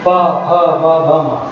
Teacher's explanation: पा ओष्ठ वर्ग में ऊपर है ना, तो बिना अपना ऊपर नीचे का होठ आपस में मिलाए हम लोग इस वर्ग को, पावर को नहीं बोल सकते। पा, फा, बा, भा, मा सब में होठ हमारा एक दूसरे से मिलता है